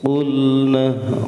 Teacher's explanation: Qul, awas, qulna qaf, bukan kulna, awas ya. Qulna itu makhrajnya, tempat keluarnya itu di aqsal lisan. Qaf itu di pangkal lidah dengan langit-langit atas, paling ujung.